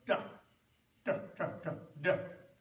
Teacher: then you make a dental sound like da, da, da, da, da